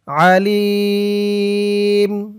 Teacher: অক্ফ করার কারণে জেরের পরে ইয়া সাকিন এক আলিফ টানটা 3 আলিফ টান হয়ে গেছে